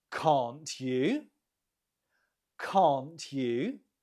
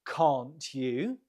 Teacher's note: note the intonation Falls and then Rises